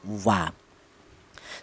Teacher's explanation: untuk huruf wawu itu memang yaitu kedua bibir, akan tetapi dihasilkan dari kedua bibir yang renggang ya, wa. Jadi melibatkan kedua bibir, baik bibir atas atau bibir bawah.